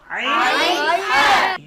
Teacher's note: কণ্ঠনালীর মধ্যখান থেকে হলকের মধ্যখান থেকে দুটি হরফ উচ্চারিত হয় আইন হা